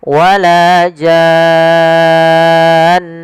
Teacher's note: panjangkan dulu jannya 6 harokat, kemudian masukkan nun dan ditahan baru dimatikan nunnya. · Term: mad lazim